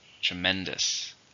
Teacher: How many syllables are in tremendous? 3. Stresses on the second.